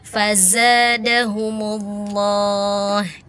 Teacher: Ingat zai ada sofirnya, ada desisnya ya.